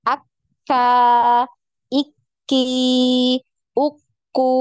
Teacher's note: tertahan dulu suaranya ya jadi seperti terputus ketika ditasdid